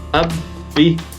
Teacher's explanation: Baknya ditasydid, masuk huruf musyaddadah. Harus dibaca rangkap, hanya ditahan selama 2 ketukan